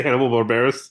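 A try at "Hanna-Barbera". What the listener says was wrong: You added like an extra B. Or maybe you just stuttered when you said Barbera. Like you added like a B sound that shouldn't have been there.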